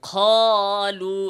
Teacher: কফ উচ্চারণের ক্ষেত্রে আমরা তিনটা ভুলের কথা উল্লেখ করেছি এক নাম্বার কফ উচ্চারণে হামস করা কফ উচ্চারণে কি করা হামস করা এভাবে খালু এভাবে বলা খ